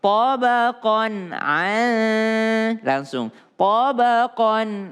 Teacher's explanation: tanwin ketemu dengan ain tidak berdengung.